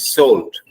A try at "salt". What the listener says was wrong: No. இஷ் இல்ல. சும்மா listen. சாப்பாடு. சோறு. Very good. சோறு. The same way. Salt.